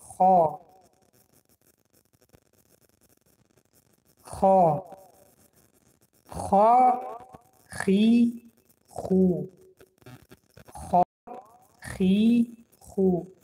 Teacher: این حرف کمی هم از حرف تاجیکی فرق میکند، چون این حرف استعلا است، یعنی که غفظ خوانده میشد